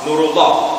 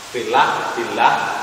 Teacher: lafaz Allah bertemu dengan kasroh, pokoknya nggak usah ragu-ragu lafaz Allahnya dibaca tipis cenderung dengan lah.